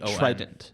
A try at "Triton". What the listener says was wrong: Not Trident, not the gum. Triton. Okay, imagine the word try, T-R-Y. And then ton. Triton.